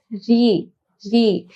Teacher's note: জীব জীবের আগাটা আমাদের উপরে যে তালু আছে এই তালুর মাঝখানে লাগে তার জন্য এটা কি মূর্ধন্য ধ্বনি